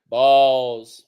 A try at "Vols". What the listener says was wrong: It's like saying ball, but put a V on it. Vol. Even though you think it should be Vol, it's not. It's not the volunteers, it's the volunteers. You got to really put some Tennessee country twang in it. Vol.